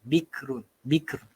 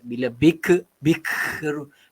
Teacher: bila kita sebut huruf kaf ini, keluar sedikit angin